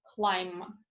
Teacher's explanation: It is laterally released when followed by L, as in climb.